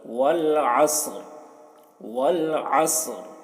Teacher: را کی زیر حالت وقف میں جزم سے بدل جائے گی